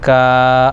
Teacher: کاف پر کھڑا زبر ہے یعنی الف مدہ کے برابر ہے، ایک الف کھینچیں گے